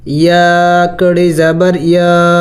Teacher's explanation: یا کڑی زبر یا کے اوپر کڑی زبر ہے، اور کڑی زبر کو ایک الف کے مقدار لمبا کرنا ہوتا ہے۔